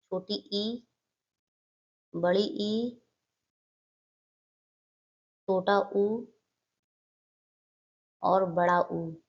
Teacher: जिन स्वरों के उच्चारण में मुख द्वार लगभग बंद रहता है। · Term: संवृत